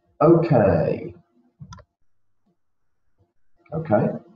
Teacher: repeat that with that falling intonation and we we we make the the K slightly longer okay